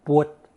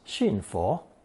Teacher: A truer approximation of the Sanskrit can be found in the older southern Chinese dialect of Fujian and Taiwan, which is pwut. The original B sound in Old Chinese has become an F in modern Mandarin.